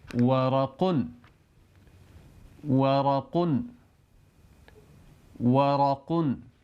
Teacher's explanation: دونوں ہونٹوں کو گول کر کے کھولتے ہوئے واو کو ادا کیا جاتا ہے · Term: واو کی آواز